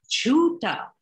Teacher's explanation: where the aspiration is on the first syllable, and that means untruthful